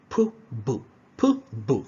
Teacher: We have the bilabial, all right, both lips coming together.